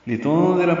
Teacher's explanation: نون ساکن کے بعد زال آنے کی وجہ سے اخفا ہے، نون ساکن کی آواز چھپائیں گے. زال نرمی سے پڑھیں گے، را پر پڑھیں گے.